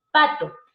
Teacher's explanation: si hablamos de sordos o sea no vibra sus cuerdas vocales